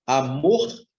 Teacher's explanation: Amor, a sílaba mais forte é o mor. Você tem uma palavra oxítona.